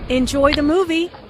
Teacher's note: Notice how the intonation rises on movie. This is said in a friendly way and is followed by an exclamation point.